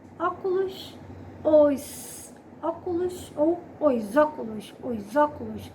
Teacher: eu estou unindo o artigo com substantivo formando uma só palavra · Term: Elisão